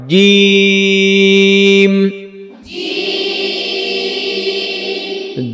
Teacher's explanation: হ্যাঁ হ্যাঁ হ্যাঁ, জিম, হ্যাঁ এটা যেন জিম না হয়, জিম এটা না, জিম জিহ্বার মধ্যখান উপরে লাগায়